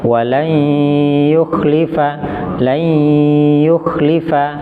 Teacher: Nah, itu ya-nya bertasdid itu. Tapi ditahan dulu 2 harokat. Kenapa? Karena ada nun mati.